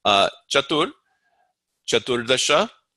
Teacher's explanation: the C is cha. It's cha without breath.